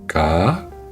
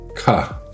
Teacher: Ka, pas de souffle. Ka, souffle prononcé.